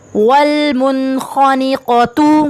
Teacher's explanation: نون ساکین ہے اس کے بعد خا آ رہا ہے تو یہاں پہ بھی غنہ نہیں کریں گے